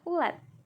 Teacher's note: Lanjut, lambang fonetis U kecil, bunyi belakang tinggi bulat